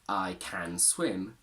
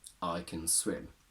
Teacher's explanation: and here it becomes a function word which has two forms a strong form can and a weak form Kun where a becomes a simple schwa